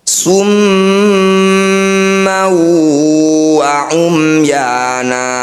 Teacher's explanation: Bunyi fathah tanwin masukkan pada huruf waw, dengungkan 2 harokat. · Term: idgham bi gunnah